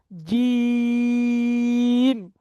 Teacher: সা, একালিপ টান। জিম, জিবের মাঝখান উপরের তালুর সাথে লাগাবেন।